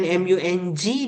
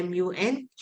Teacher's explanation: Dia bukan MUNG, dia MUNK sebab kita jumpa kaf.